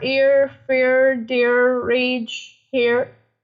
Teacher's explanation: we are more stressing upon the first vowel sound, and it is much longer and stronger than the second part of the word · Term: diphthongs